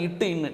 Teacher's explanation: இட்டு இன்னு நாவின் நுனி அன்னத்தின் நுனி.